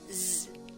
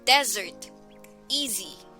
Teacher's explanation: S also often makes the same sound as the letter Z, transcribed in IPA as small z. This sound is formed the same way as S, but it is voiced, meaning the vocal cords are engaged while making the sound. S only produces the Z sound when it appears in the middle or at the end of a certain words.